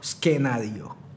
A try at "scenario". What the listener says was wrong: Scenario. Silent C.